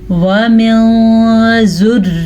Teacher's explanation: वमिन ज़ुर्रिय्यतिना, नून साकिन के बाद जब भी हरूफ़े इख़्फ़ा में से कोई हर्फ आ जाए तो नून साकिन को छुपा के पढ़ते हैं और गुन्ने के साथ पढ़ते हैं